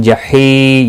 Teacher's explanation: یا مدہ ہے، 1 الف کے برابر کھینچ کر پڑھیں گے